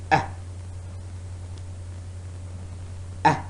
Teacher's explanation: A short sound. Make the sound and point out the loosely spread position of your lips.